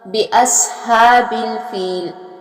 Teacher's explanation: سواد جو ہے اس کو بھی پر اور موٹا پڑھا جائے گا